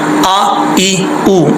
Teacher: حمزہ کا ساؤنڈ آپ کو پتہ ہے سختی سے پڑھا جاتا ہے